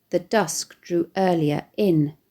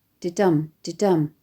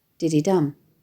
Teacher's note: with 2 initial iambic feet, didum, didum, followed by an anapaest, dididum. This first line also ends with an uncustomary dash, forcing the reader to pause. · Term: disrupted rhythm